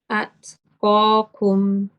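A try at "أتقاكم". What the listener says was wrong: Yes, just after the ta, after you do you're doing the shidda, you're doing the hums, but after that, then you stop for a while. So you say at, you say at. You see the break is, the pause is a little bit too long.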